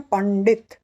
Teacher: आगे आया ड जो कि है ट वर्ग का, जिसका अनुनासिक है ण, तो उसका उच्चार हम करते हैं पंडित। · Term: अनुस्वार